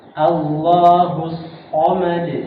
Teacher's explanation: Sotnya harus ada sofirnya, suara tajam.